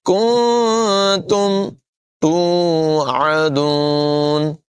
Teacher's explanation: کاف کی آواز باریک ہوگی، نون میں اخفا کریں گے، غنہ کر کے پڑھیں گے